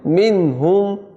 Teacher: نون ساکن کے بعد ہا آ گیا تو غنہ نہیں ہوگا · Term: اظہار